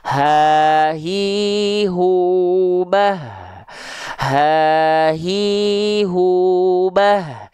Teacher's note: karena H besar dilafalkan dari tumma li aqsol halqi hamzun ha Keluarlah dari aqsol halqi pangkal tenggorokan huruf hamzah dan ha besar · Tepatnya kalau H besar dari pita suara yang membuka, makanya keluar nafas.